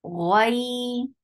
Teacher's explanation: Ghain is short, the sound is heavy. Ghai. Ghai, ghain is heavy, attached with ya, there is lean.